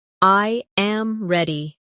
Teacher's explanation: The voice falls naturally at the end.